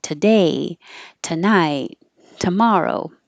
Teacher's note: the two doesn't sound like two. It changes to ta because it's not stressed. So ta is super short.